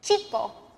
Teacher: Your tongue is sort of blocking the air from coming out. That's what produces the CH sound instead of the SH sound.